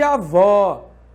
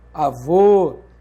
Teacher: O acento agudo marca o timbre aberto e o acento circunflexo marca o timbre fechado.